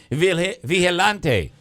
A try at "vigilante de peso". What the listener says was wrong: Vigilante de peso. The G is pronounced like an H. So vigilante de peso.